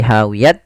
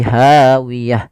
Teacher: ada huruf ta yang diwakafkan, maka kita ganti dengan huruf ha besar. Maaf, huruf ha, maka dia ganti bukan lagi hawiyat tapi hawiyah.